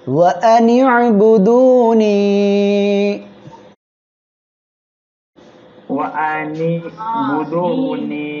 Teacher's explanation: হামজাটা শক্ত করে পড়বেন, আর এখানে আইন অক্ষরটা গলাটা চেপেও পড়বেন